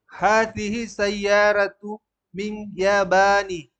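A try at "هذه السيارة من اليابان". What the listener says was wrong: Alif lamnya. Hazihis sayyaratu. Harus jelas.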